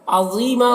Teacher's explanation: عظیمہ، غا کو پر پڑھنا ہے، یہاں پر یا مدہ ہے، ایک الف کے برابر کھینچیں گے